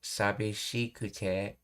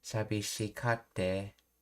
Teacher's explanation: This change occurs because ku sounds often shift or elides in rapid Kansai speech, leading to ka sound bridging directly to sute, which represents the glottal stop of the sokuon. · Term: Kate contraction